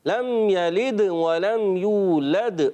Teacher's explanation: لد میں دال میں قلقلہ بھی خوب واضح کرنا ہے